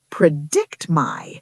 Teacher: Did you notice how predict my sounds like one single word? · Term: connected speech